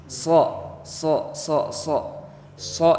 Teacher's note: huruf sho itu pangkal lidahnya diangkat ujung lidah dibiarkan menggantung dan dibaca menebal sok sok sok itu pengucapannya gaya huruf sa sa SSS tapi